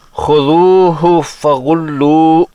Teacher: آخری ہا کا تلفظ سنائی نہیں دیتا